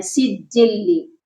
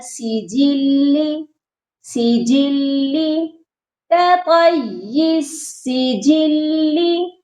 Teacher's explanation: جیم جو ہے وہ مشدد نہیں ہے، جیم کو ہم نے سختی سے نہیں پڑھنا، یہ پڑھا جائے گا سجلی، سجلی کطیس سجلی۔